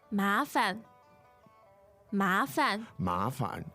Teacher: the tones there are Second and neutral.